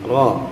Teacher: ro-nya ini kita boleh memperbantukan kedua bibir kita supaya bunyinya itu di o ya.